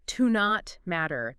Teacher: Yeah, you might hear it almost like one word, like to not matter. The T in not kind of blends into the M.